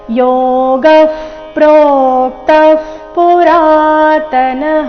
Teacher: ಎರಡು ವಿಸರ್ಗದ ಉಚ್ಚಾರಣೆ ಅರ್ಧ ಪ ರೀತಿ ಯಾಕಂದ್ರೆ ವಿಸರ್ಗದ ನಂತರದ ಶಬ್ದ ಪ ದಿಂದ ಶುರುವಾಗ್ತಾ ಇದೆ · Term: ಅರ್ಧ ಫ